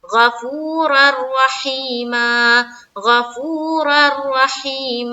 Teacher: دو زبر کی جو تنوین ہے وہ را سے بدل جا رہی ہے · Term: ادغام تام